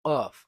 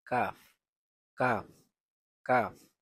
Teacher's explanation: কাফ, কাফ, কাফ উচ্চারিত হবে জিহ্বার গুড়া হতে একটু আগে অগ্রসর হয়ে। আগে উচ্চারণ করছিলাম কফ, আর এখন হবে কাফ, কাফ, কাফ।